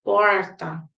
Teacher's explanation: os as pessoas do interior de São Paulo elas vão dizer porta né Essa R é chamada de R retroflex